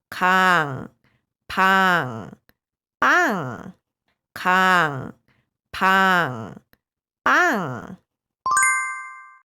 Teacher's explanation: The consonant 이응 retain its original pronunciation. It's finished with mouth open.